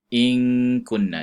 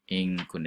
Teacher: nun mati bertemu dengan kaf, in kunna ikhfa kan, disembunyikan bunyinya, itu dan ada bunyi dengung sedikit. In kunna disembunyikan bunyi huruf.